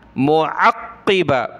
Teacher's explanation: قاف کو سخت کرنا ہے تشدید کی وجہ سے اور موٹا بھی کرنا ہے